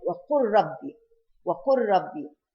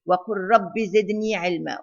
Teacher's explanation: we merge the lam with the ra because of the near makhraj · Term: idgham